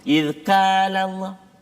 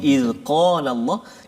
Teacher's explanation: kaf di depan, qaf belakang dia. Qaf ni dia dekat dengan anak tekak.